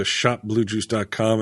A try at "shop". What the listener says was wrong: You said shop with a P, right? It sounded like you said shot, like shop.